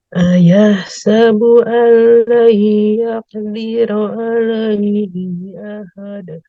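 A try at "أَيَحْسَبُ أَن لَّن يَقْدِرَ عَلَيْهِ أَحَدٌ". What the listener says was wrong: Oke, betul. Teruskan.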